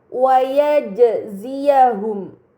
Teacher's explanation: terdapat jim sukun, ini dinamakan qalqalah, maka harus dibaca secara memantul